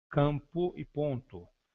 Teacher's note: Da mesma forma que não se pode dizer que há encontro consonantal nas palavras campo e ponto, pois o M e o N funcionam essencialmente como sinais de nasalidade da vogal anterior com o valor de um tio.